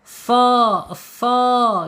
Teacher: So makhraj sama dengan sin, sama ya. So tapi dia isti'la, tebal. So panjang 2 harokat ya, mad tabi'i.